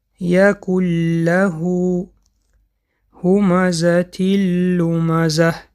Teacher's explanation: مثال های ادغام بی غنه: مثال های حرف لام: یکل له همزة لمزه. به سبب که حرف لام بی غنه خوانده می شود، به این سبب این را ادغام بی غنه گفتند.